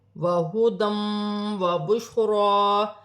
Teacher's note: دو زبر کی تنوین کے بعد واو مشدد آ رہی ہے، واو مشدد حرف یرملون میں سے ہے، تنوین میں غنہ بھی کیا جائے گا، ملا کر بھی پڑھا جائے گا